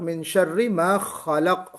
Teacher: خا کو تھوڑا سا پر کیجئے، کیونکہ حرف استعلا ہے یہ